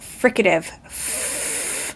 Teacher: I sort of make turbulence for the F.